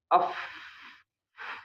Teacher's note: Misalkan huruf fa ya, kita sukunkan af itu enggak bergetar tuh jakun kita ya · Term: hams